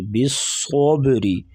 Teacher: صاد کو موٹا اور با کے اوپر قلقلہ کریں گے